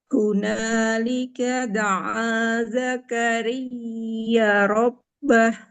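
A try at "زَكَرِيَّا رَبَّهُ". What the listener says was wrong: Sempurnakan Ibu panjang huruf ya-nya. Ada harokat fathah ketemu alif berarti panjang dua harokat. Hunalika da'a Zakaria rabbah.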